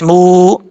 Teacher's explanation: میم کے بعد جو واو ہے یہ واو مدہ ہے، 1 الف کی مقدار لمبا کر کے پڑھا جائے گا